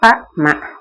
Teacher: இதழ் ஏய்ந்து ப ம. மேலுதடும் கீழுதடும் தம்முள் பொருந்துவதால் தான் பகாரம் மகாரம் 2ம் பிறக்கும்